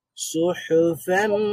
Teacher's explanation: হাসের হরফ হা এর আওয়াজটা জারি থাকবে